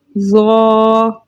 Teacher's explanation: الف مدہ کے ساتھ آیا 2 حرکت کی مقدار کھینچ کر پڑھیں گے